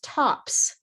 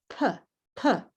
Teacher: The final sound is the P sound, P, P, no vibrate. Therefore, the plural is also no vibrate, tops, tops.